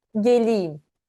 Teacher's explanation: there is no vowel narrowing in the grammar, but when we speak, it goes through vowel narrowing and it becomes e, geleyim.